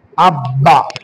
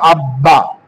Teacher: তাসদীদ থাকার কারণে এই বা দুইবার উচ্চারণ হবে। যেহেতু জবর আছে, জবরটাকে আমরা আকারে নিয়ে আসলাম।